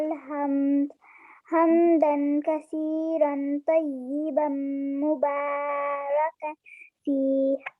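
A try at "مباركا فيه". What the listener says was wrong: آپ را زیادہ لمبا کر رہی ہیں, ٹھیک ہے, را کے بعد الف تو نہیں ہے. مبارکا فیہ.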